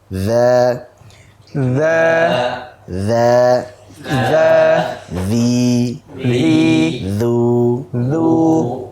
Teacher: huruf dzal itu yang mengalir adalah suaranya. Nafasnya tidak mengalir, kemudian dia dibaca tipis.